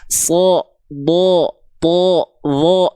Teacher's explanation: kalau huruf tebal, dia tidak akan terdengar seperti vokal A ketika fathah. Tapi dia akan lebih mirip seperti vokal O.